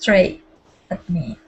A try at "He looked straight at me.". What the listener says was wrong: You said it good once, and then you had said straight one more time. So he looked straight at me.